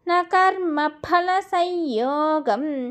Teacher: నా కర్మ ఫల సంయోగం సాంస్క్రిట్లో ఫా అనే పదం ఉండదు, పా అని చదవాలి. 2 పెదాలు బిగబట్టి వదిలితే ఫా అనే పదం వస్తుంది. సంయోగంలో సంయోగం అని ఉంటుంది, ఆ సున్నాన్ని కొట్టేసి యాకి యకారం పెట్టుకోవాలి.